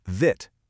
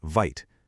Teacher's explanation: But because that silent E is there, it magically changes the I from a short sound to a long I sound. That's the VCE pattern doing its thing.